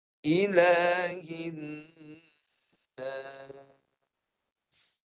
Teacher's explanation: Sempurnakan dengung 2 harakat pada huruf yang bersabdu.